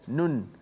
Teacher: Memang nun tu kalau sebut tu, kalau kita sebut nun saja kan, nun. Memang bukan sekadar hujung lidah kita naik ke langit huruf nun tu, tapi suara keluar nun tu, suara tu keluar daripada hidung, itulah suara gunnah.